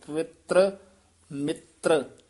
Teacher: ਪਵਿੱਤਰ ਮਿੱਤਰ ਰਾਰੇ ਪੂਰੇ ਨਹੀਂ ਬੋਲਣੇ ਜਿਸ ਤਰ੍ਹਾਂ ਬੋਲਿਆ ਗਿਆ ਇਸ ਤਰ੍ਹਾਂ ਹੀ ਉਚਾਰਨ ਕਰਨਾ ਪਵਿੱਤਰ ਮਿਤ੍ਰ